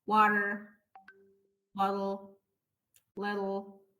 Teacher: هتلاقوا صوت طالع، لا هو دي ولا هو ار. ده الفلاب تي